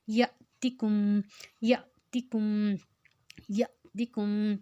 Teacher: اوپر جازم ہے تو اس کو جھٹکا دے کے پڑھیں گے، یا کے اوپر ساتھ الف ہے اس کے اوپر جازم ہے تو اس کو ہم جھٹکا دے کے پڑھیں گے ، شعنن یأتکم یأتکم یأتکم بئس بئس بئس، اب حمزہ کے